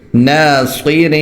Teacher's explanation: را دو زیر رین، را باریک ہوگا کیونکہ اس پر زیر ہے، اور اخفا ہوگا کیونکہ تنوین ہے